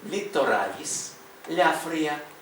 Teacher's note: Ель вимовляється м'яко в латині